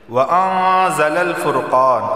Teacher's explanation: الف سے پہلے زبر آیا تو اسے ایک الف کے برابر کھینچ کر پڑھا جائے گا۔